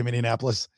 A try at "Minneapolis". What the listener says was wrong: That's not the word. Nope. Minneapolis. No, you're adding a syllable. It's Minneapolis.